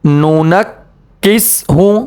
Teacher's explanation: کاف کے اوپر تشدید ہے تو کاف کو ہم نے 2 مرتبہ پڑھنا ہے، اور تشدید والے حرفوں میں ایک قسم کی سختی ہوتی ہے۔